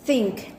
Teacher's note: With manner of articulation, fricative, and place of articulation, interdental.